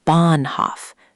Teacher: It's Bahnhof. Big stress on the first part, the second part shrinks.